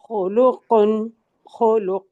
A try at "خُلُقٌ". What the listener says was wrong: خولو، خو نہیں، خلوقن، خلق، قاف کو ہلائیں گے نا ہم ساکن حالت میں۔ خلق، بس قاف ہلا دے، بارک اللہ فیک۔ اچھا جی، متینہ، متینہ آپ آ جائیں۔